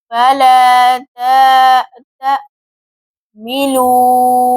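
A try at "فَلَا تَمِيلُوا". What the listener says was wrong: غلط ہو گیا تا کو اور میم کو تا کو لمبا نہیں کریں گے میم کو کھینچ کر پڑھیں گے دوبارہ پڑھیں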